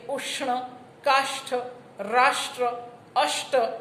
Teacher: ગુજરાતીમાં એક મૂર્ધન્ય સંઘર્ષી શ, જેને આપણે ફાડિયો શ કહીએ, ષટકોણનો શ, મૂર્ધન્ય સંઘર્ષી શ છે.